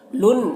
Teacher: लुन यहाँ पर लाम को नून से मिलाकर पढ़ेंगे, नून में गुन्ना होगा।